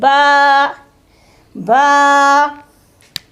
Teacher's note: ये गीले हिस्से से अदा होता है, ठीक है, जब दोनों होंठ आपस में मिलते हैं